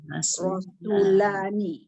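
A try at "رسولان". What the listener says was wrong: Su tak panjang. Su tak cukup panjang. Bagi panjang ni. Rasul. Rasulani. Rasul.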